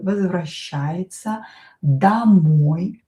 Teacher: О not stressed pronounce it as а.